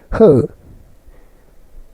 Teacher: स्वर यंत्र मुखी या काकल्य व्यंजन, जिन व्यंजनों के उच्चारण में अंदर से आती हुई श्वास तीव्र वेग से स्वर यंत्र मुख पर संघर्ष उत्पन्न करती है स्वर यंत्र मुखी व्यंजन कहलाते हैं।